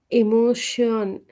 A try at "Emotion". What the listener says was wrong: No, not shun, eon. So how you say neon, right? That eon. eon.